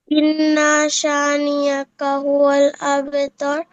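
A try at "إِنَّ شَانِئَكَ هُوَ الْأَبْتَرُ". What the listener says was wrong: ইন্না টান হবে না, ইন্না শানিআকা হুয়াল আবতার।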